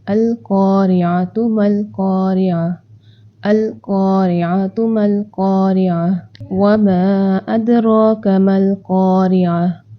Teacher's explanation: زبان کی جو جڑ ہے وہ جب اوپر نرم پیلٹ سے لگتی ہے، اوپر نرم حصے سے لگتی ہے تو ہمارا قاف ادا ہو جاتا ہے